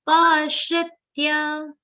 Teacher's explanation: pa is a long sound ending with a subtle aghat of sha.